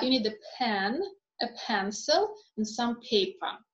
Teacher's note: we are going to have rising rising intonation and then um on the final item the intonation is going to fall